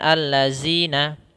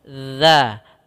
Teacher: huruf dzal kita keluarkan daripada ujung lidah menempel dengan gigi seri atas, sehingga atau kita keluarkan sedikit dan menempel za sehingga sempurna dari makhraj dan sifat huruf dzalnya.